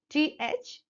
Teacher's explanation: the tip of the tongue between upper and lower teeth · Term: lingo Dental contact